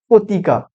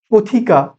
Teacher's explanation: ছিল পথিকা থ, থ হয়ে গেল পতিকা, ত আর থ, ত অল্প প্রাণ, থ মহাপ্রাণ, তো মহাপ্রাণ ধ্বনি অল্প প্রাণে পরিণত হয়ে যাচ্ছে